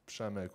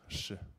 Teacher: It's my short name actually, but you pronounce it with like silent P, and then RZ makes like a sh sound